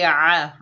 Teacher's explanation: आइन के ऊपर ज़बर बगैर खींचे पढ़ेंगे आ। आइन जो है हलक के दरमियान से अदा होगा